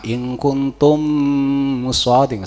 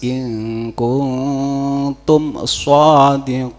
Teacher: Jadi memnya dibaca jelas, namanya idhar syafawi.